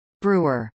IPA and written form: ˈbruːɚ (brewer)